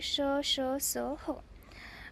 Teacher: ज्या व्यंजनांचा उच्चार करताना जिभेचा उच्चारक अव्ययाशी पूर्ण स्पर्श होत नाही म्हणजे मुखातील उच्चारक अव्यय आणि जीभ यांच्या थोडेसे अंतर असते ती म्हणजे उष्म व्यंजने मग ती कोणती आहे श ह आता